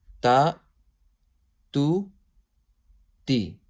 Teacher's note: So ta is pronounced from there. So with the tip of the tongue touching the roots of thanaya ulya